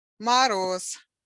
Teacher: voiced consonant but at the end of the word it becomes voiceless